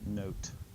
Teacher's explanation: technically it's a little bit shorter Oh sound than the Omega